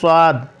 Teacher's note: स्वाद जो मुंह गोल हो के अदा होगा